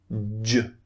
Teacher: the lips are coming out again J not exactly rounded but they're being pushed out